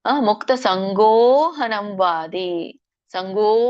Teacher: ಅ ಬರುತ್ತೆ ಸೋ ಹಾಗಾಗಿ ಇಲ್ಲಿ ಅ ಒಂದು ಏನಾಗಿದೆ ಅದಕ್ಕೆ ಏನು ಹೇಳ್ತಾರೆ ಅ ಅನ್ನುವಂತದ್ದು ಮಾಯವಾಗಿ ಗೋ ಅನ್ನುವಂತದ್ದು ದೀರ್ಘ ಹೆಚ್ಚಾಗುತ್ತೆ ಹಾಗಾಗಿ ಅಲ್ಲಿ ಅವಗ್ರಹ ತೋರಿಸ್ತಾರೆ ಮುಕ್ತ ಸಂಗೋಹನಂವಾದಿ ಸಂಗೋ ಎಳಿಬೇಕು ಅದನ್ನ ಅನುಸ್ವರ ಇದ್ದಾಗ